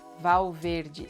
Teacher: you have the L before a consonant sounding like W as well, and you have the E sounding like E at the end.